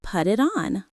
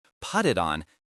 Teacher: This involves what we call a flap T. In American English, especially when a T is between two vowel sounds, it sounds like a soft D.